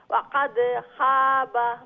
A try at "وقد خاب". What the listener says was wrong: লেটা খ যে আর একটু মোটা করে উচ্চারণ করবা। ওয়াকাদ খাবা, ওয়াকাদ খাবা।